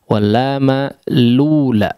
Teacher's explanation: Asalnya adalah al-ula, ya. Kemudian harakat dhammah huruf hamzah, ya, dipindahkan ke lam, ya, lam sebelumnya disebut dengan naqal sebetulnya, ya.